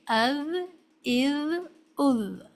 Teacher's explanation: ذال کو ادا کرنے کے لیے ضروری ہے کہ ٹپ آف ٹنگ اوپر کے سامنے کے دو دانتوں کو، جن کو ہم ثنایا علیہ کہتے ہیں، کے کناروں سے لگنی چاہیے، از، از، از، اور یہ باریک حرف ادا ہونا چاہیے۔